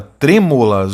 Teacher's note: palavra proparoxítona Olha a sílaba tônica é a antepenúltima